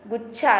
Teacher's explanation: जैसे कि गुच्छा, तो छा के ऊपर हमारा भार होता है, तो हम यहाँ पर छोटा ऊ का मात्रा लगेंगे, गुच्छा।